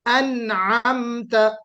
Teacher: ہاں، انعمت ہو گیا، تھوڑا سا عین پر زبر ہے، اس کو تھوڑا سا امالہ کے ساتھ، یعنی واؤ کے ساتھ نہیں پڑھیں، انعمت نہیں، عین بے شک آپ نکالیے، لیکن ایسا عین مت نکالیے کہ جس میں واؤ لگ جائے